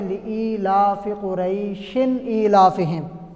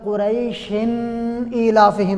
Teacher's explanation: تنوین ہے لیکن آگے یہ حمزہ آ رہا ہے اور حمزہ حروف حلقی میں سے ہے، اس لیے غنہ نہیں کریں گے